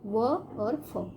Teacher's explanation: फिर है दंतोष्ठ। दंतोष्ठ है अर्थात ऊपरी दांत और निचले होंठ से, जब हम इस वर्णों को बोलते समय जो हमारी जो है ऊपरी दांत और निचले होंठ से इनका उच्चारण होता है, जैसे व और फ।